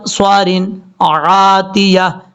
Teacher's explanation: یہاں پہ غنہ نہیں کرنا، آگے عین ہے بلکہ یہاں پہ اظہار حلقی ہے